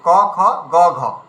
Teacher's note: প্রথমটা অল্পপ্রাণ, দ্বিতীয়টা মহাপ্রাণ, প্রথমটা তার তৃতীয়টা অল্পপ্রাণ, চতুর্থটা মহাপ্রাণ।